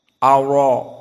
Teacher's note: maka hamzah yang pertama muraqqaqah dan ra mufakhamah